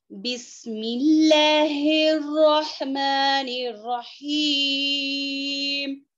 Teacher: बिस सीटी वाली आवाज आनी है।